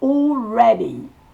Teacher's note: Et le premier mot, c'est all. AL se prononce O, comme un O long.